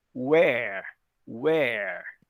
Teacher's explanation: vocês têm que fazer o R bem forte, bem enrolado